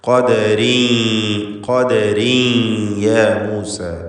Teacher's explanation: തൻവീനിനെ യായിലേക്ക് ലയിപ്പിച്ച് മണിക്കണം. ഇദ്ഗാം ബിഗുന്ന നാഖിസ്.